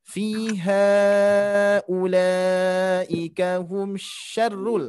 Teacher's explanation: pertemuan mad bertemu alif. Nah, ini akan terjadi mad panjang 4 harokat meskipun tidak ada tanda alif. Karena ciri pertama itu, ciri yang utama adalah mad bertemu alif atau mad bertemu hamzah.